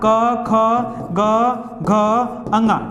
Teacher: क में कम हवा होती, ख में ज्यादा होता, ग में कम होती, घ में ज्यादा होता, फिर अंगा में कम हवा। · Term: अल्प प्राण